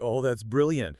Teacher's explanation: When a human speaks a word genuinely, let's take the word brilliant from your rain example, the delivery is usually balanced. The pitch contour is relatively flat or naturally falling, and the duration of the vowels is standard.